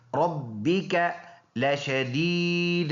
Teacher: یا مدہ ہے یا ساکن سے پہلے زیر ہے ایک الف کے اندازے سے لمبا ادا کریں گے